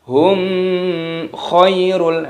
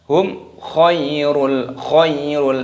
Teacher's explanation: Hum khairul, nah, mim sukun bertemu dengan huruf kha, hukumnya dibaca idhar syafawi, dibaca jelas, jangan didengungkan